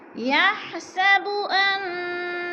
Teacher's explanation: نون مشدد ہے، غنہ کریں گے، سختی سے پڑھیں گے